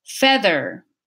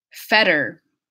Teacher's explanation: a word medial voice TH compared to a flap T in minimal pairs